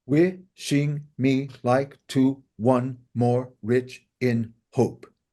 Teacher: How do we pronounce wishing? Stress on the first syllable, right?